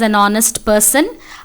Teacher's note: So, honest and har are wrong pronunciation. We actually have H as silent in both the words.